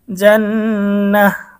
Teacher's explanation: গোলতার উপরে ওয়াকফ করলে গোলতা হা হয়ে যাবে ওয়াকফ করার কারণে সাকিন হয়ে যাবে